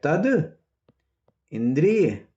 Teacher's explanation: तत है और इसके बाद स्वर आ गया स्वर आ गया तो क्या हो जाएगा त का द हो जाएगा